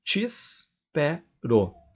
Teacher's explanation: Então, aqueles 2 es do te espero, aqueles 2 es juntos formam um som só que vira um i